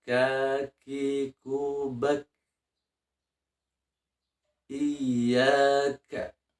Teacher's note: makhroj Kaf adalah pangkal lidah ditempel ke langit-langit bahagian luar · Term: makhraj kaf